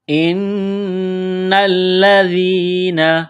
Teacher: حمزہ کو نون کے ساتھ ملانا ہے، نون مشدد ہے۔ اس کے بارے میں ہم پہلے بتلا چکے ہیں کہ نون اور میم مشدد جہاں بھی آ جائے تو وہاں آواز ناک میں چھپائی جاتی ہے، غنہ کیا جاتا ہے، تو یہاں پر غنہ کریں گے۔